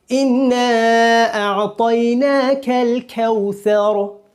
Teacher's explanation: اقصائے لسان یعنی زبان کا نچلا حصہ جب ادنائے حلق یعنی گلے کے اوپری حصے کو لگے تو کیف ادا ہوتا ہے